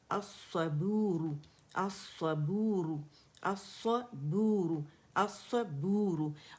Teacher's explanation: اور بو کر کے موٹا نہیں پڑھنا، با بو ہے